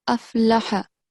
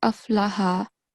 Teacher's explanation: don't prolong the ha